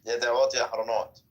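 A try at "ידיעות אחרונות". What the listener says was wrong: No, wait, you're saying it wrong now. So first, no, you said the second word wrong. So the first word is Yediot. Yediot Ahronot. Not Yahronot, Ahronot.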